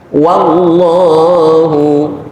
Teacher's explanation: Lagi-lagi wawu dipatah, dibaca wa bukan wo.